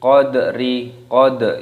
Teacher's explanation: Qad itu namanya qalqalah, ternyata di qalqalah, dipantulkan suaranya.